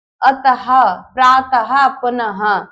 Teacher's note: और विसर्ग का उच्चारण ह की तरह किया जाता है